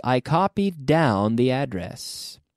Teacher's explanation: notice how we'll link the D on to the next D